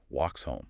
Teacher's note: The S might just blend right into the H sound